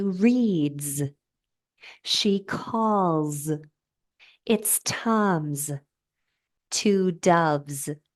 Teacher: the S is vibrating a voiced sound like M or o the final s usually not always but usually changes to the Z voiced sound